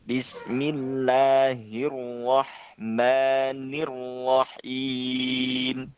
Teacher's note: getarnya roh mungkin bisa ditahan sedikit lagi supaya getarnya tidak terlalu banyak